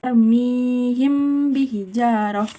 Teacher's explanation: Ikhfa sapawi yaitu membunyikan mim secara samar beserta dengungan. Hurufnya cuma 1, yaitu ba.